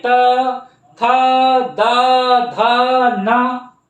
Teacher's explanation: ये जब आप बोलेंगे इन अक्षरों को तो आपके दांत से टकराएंगे। त, देखिए जो जबान है आपके, दांत से टकराएगी। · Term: दंतस्थ